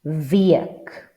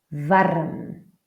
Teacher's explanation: like most Germanic languages, the W becomes V